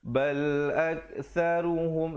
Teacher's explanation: sa di hujung lidah, saru ru. Dibacakan tebal di situ.